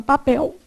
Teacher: Observa que quando você fala papel, embora você faça o som de U, sua boca enruga muito pouco.